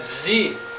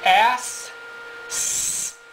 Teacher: when we vibrate the vocal cords, pronounce Z, we have here Z. So we have voiced sounds. When we make S, S, unvoiced.